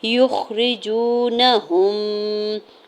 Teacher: ہا کی پیش کو میم مشدد کے ساتھ ملاتے ہوئے غنہ کریں گے · جیم کے اوپر پیش آگے واو ساکن ہے، واو مدہ ہو رہا ہے، دو حرکت کھینچ کے ادا کرنا ہے ، نون کے زبر کو بغیر کھینچے ہوئے ادا کریں گے